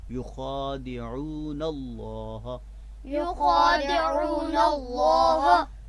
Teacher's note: تو لہٰذا یہاں پہ یخادعون کا جو آخری نون ہے اس کے اوپر زبر ہے، اور زبر کے ساتھ ہم لفظ اللہ کے لام کو ملا کر پڑھ رہے ہیں. لہٰذا یہاں پہ لفظ اللہ کا لام پر پڑھیں گے.